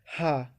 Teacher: और स्वर यंत्री जिसे कहते हैं वो दिए गए कंठ के भीतर की स्थिति, जिसमें हा आता है, हा, जिसमें आप जीभ कहीं नहीं टच हो रही है, ना ही दांत कहीं टच हो रहा है, तो सीधे कंठ से हवा आ रही है, इसीलिए इसे कंठ ध्वनि कहते हैं, हा।